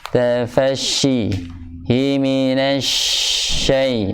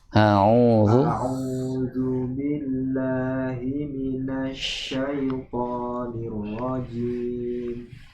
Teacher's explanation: Himinasyai mempunyai sifat tafasyi, yaitu menyebar udara di celah-celah gigi.